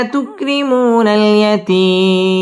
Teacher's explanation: নাল ইয়াতীম মদ্দে আরজি 3 আলিফ টান দিয়ে ওয়াকফ করতে হবে